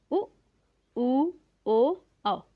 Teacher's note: जिन वर्णों के उच्चारण में होठ आगे की तरफ निकलकर वृत्त का रूप धारण कर ले उन्हें वृत्ताकार या वर्तुल स्वर कहते हैं